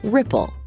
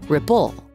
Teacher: The first syllable of ripple is stressed, so we say ripple, not ripple.